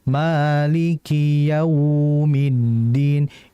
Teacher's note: Sifat lin pada waw adalah dengan tidak menghentak.